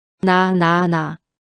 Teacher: 혀끝이 정확히 윗잇몸에 닿았죠. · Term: 니은